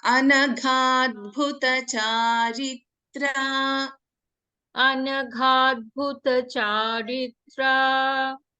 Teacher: Gha is a mahaprana. Then we have bha mahaprana.